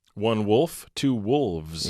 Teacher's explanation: think of the V, really, it's nothing more than a voiced F. It has nothing to do with the B of Barcelona, right?